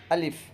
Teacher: الف، الف کا مخرج ہے حلق کی خالی جگہ سے الف ادا ہوتا ہے۔ الف، الف نہیں، یعنی لاسٹ میں فا کی آواز آنی چاہیے آخر میں۔